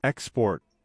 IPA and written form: ɪkˈspɔːrt (Export)